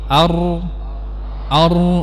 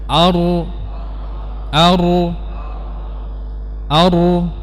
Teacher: mengucapnya dengan meletakkan lidah di tengah langit-langit di sini ini salah yang benar adalah di gusi ya bukan di tengah